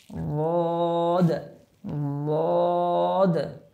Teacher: বদ উচ্চারণ করার সময় আমাদের একটু জিহ্বার গোড়াটা মাড়ির দাঁতের গোড়ার সাথে লাগবে